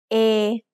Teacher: this is a long vowel that makes the sound a like the a y in grey